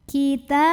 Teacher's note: Maka cara bacanya kita tebalkan lam jalalahnya. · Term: tafkhim